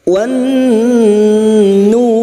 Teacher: Masuk lagi pada idgham syamsiyah, ciri-ciri lam ta'rif atau alif lam yang tidak bersukun. Masuk pada huruf nun yang bertasdid dan mendengung selama 3 harakat.